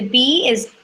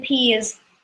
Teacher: the lips the teeth and the tongue are exactly the same as the B the only difference is here we don't make any noise